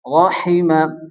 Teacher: বড় হা, মুখ দিয়ে হালকা বাতাস বের হবে।